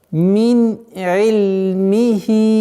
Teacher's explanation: А здесь у нас правило идгар, ясное произношение согласного нуна, нун сакин, мин и.